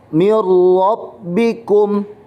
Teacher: nun mati bertemu dengan huruf ro bacaannya juga tidak boleh dengung atau ditahan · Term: idgham bilagunnah